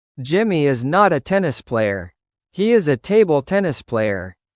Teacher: But in natural English speech, you should pronounce is lightly and quickly, linking it to the next word. Usually it sounds short and low unless you want to put extra emphasis on it.